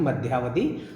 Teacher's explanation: मध्य अवधि में अ प्लस अ के माध्यम से आ का निर्माण हो रहा है। और मध्यावधि शब्द का जो संरचना है उसमें आ का आगमन हो रहा है, अ प्लस अ बराबर आ हो रहा है, मध्यावधि। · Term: दीर्घ संधि